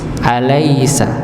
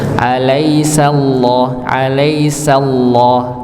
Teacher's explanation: lafaz Allah ya kalau tadi kita alaisa lamnya dibaca tipis alaisa tapi lam pada lafaz Allah ini khusus dibaca tebal ya dibaca tebal